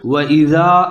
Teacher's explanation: اس کو زال پڑھنا ہے، سیٹی نہیں بجانی